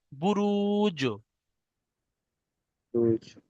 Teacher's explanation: আর জিম সাকিনকে, এই জিমটা হলো হরফে কলকলার পাঁচটি অক্ষরের মধ্যে একটি, তাই জিমকে কলকলা করে পড়তে হবে